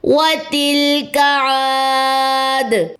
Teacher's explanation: واو کی زبر لمبی نہیں ہوگی، تا کی زیر لام کی جزم سے ملے گی، اور کاف کی زبر بھی لمبی نہیں کرنی، لیکن عین کی زبر لمبی ہوگی کیونکہ یہاں پہ الف مد کا قاعدہ ہے۔ · 2 کاؤنٹس، اور دال کی دونوں پیشیں اگر تو وقف کرنا ہے تو ڈراپ ہو جائیں گی، اور دال پہ جزم آ گئی تو کلکلا ہو جائے گا